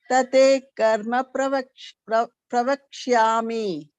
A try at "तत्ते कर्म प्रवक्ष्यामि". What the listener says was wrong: This is tatte. This is double ta is there. Ditvam here. Here there's a ditvam there.